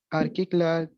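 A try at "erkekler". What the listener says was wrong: आर्किक नहीं, एरकिक, एरकिक, किक नहीं, एरकिक, किक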